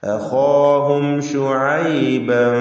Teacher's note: വെളിവാക്കി മണിക്കാതെ മീമിനെ ഉച്ചരിക്കുക. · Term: ഇൽഹാർ ഷഫവി